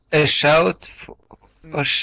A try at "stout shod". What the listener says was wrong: Stout. Not shout. Stout.